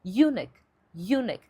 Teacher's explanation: ela tinha a tendência de fazer a sílaba tônica ser na primeira sílaba